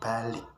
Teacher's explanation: Vokal I pada kata balik diucapkan rendah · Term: modifikasi vokal